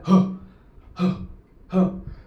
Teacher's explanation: ह उच्चार करताना फुफुसातील हवा तोंडा जोरात बाहेर फेकली जाते म्हणून त्याला महाप्राण असे म्हणतात